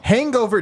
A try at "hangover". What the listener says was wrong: put a hard G in hangover? Hangover. Say it again.